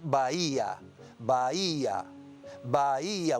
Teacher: hay una concurrencia de vocales que se pronuncian en diferentes emisiones de voz y por tanto constituyen un hiato. Y este acento que se emplea para marcar qué vocal es la que debe ir acentuada, tónica, fuerte, es acento hiático.